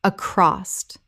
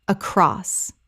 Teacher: Two syllables. There is no T at the end, ever.